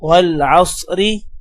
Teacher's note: را یہاں پر باریک پڑی جائے گی کیونکہ را کے نیچے زیر ہے